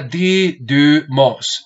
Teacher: es poner la boca para decir U, pero realmente pronuncio una I. Entonces pongo la boca si tú haces la imagen para decir U, pero no voy a decir U, sino que con la forma de la boca que va a decir U, dices I, U.